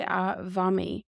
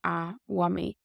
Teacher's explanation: the MH becomes a V sound if you're in Munster or the Standard Irish, and it's a W sound in Connacht and Ulster